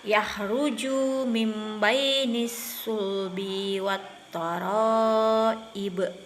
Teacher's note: iqlab karena nun mati bertemu huruf ba, cara bacanya didengung karena nun matinya diganti jadi mim